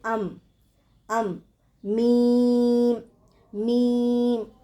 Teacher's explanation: دونوں ہونٹوں کی خشکی والے حصے سے نکلتا ہے